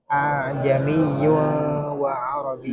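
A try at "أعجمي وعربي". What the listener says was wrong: Bukan yung, bukan ikhfa, idgham. Masuk ke waw. Jamiyun wa arabi. Ya, jadi itu membacanya bukan jami, bukan jelas seperti itu, tapi ya hamzah yang kedua itu ditashil. Tashil itu dimudahkan. Jami wa arabi.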